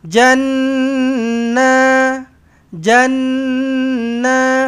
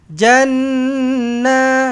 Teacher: Nun sabdu eh. Dengungkan dengan dua harakat. Wajibul ghunnah.